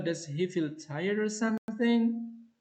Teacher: Or something is not made into a separate tone group and continues the movement of the first alternative.